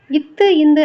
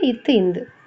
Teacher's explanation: நாவின் நுனி மேல்வாய் பல்லின் அடிப்பகுதியை தொடுவதால் பிறக்கின்றன இது இரண்டுமே வந்து நாவோட நுனி வந்து மேல்வாய் பல்லின் அடிப்பகுதியை தொடுவதால் பிறக்கின்றன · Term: நட்பெழுத்துக்கள்